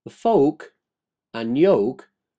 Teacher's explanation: you cannot hear the L being pronounced